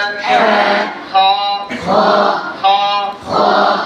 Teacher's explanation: জিম জিম হা হা হা হা হা খ খ খ কোন যেন গোল না হয়। অনেকের খ যে সময় ঠোঁট গোল হয়ে যায়।